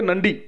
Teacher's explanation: this ra is pronounced like a ta not like the retroflex star but like a dental ta like